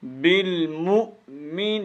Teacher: بالمؤمن، جھٹکے کے، حمزے کو اچھی طرح جھٹکے کے ساتھ پڑھنا ہے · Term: حمزہ